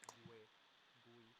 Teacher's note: Notice that I don't pronounce the U. Gue, gui. I say ge and gi.